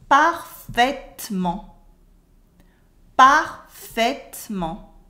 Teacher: The T at the end is silent. · We cut the E in the middle and it becomes parfaitement. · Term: cutting the E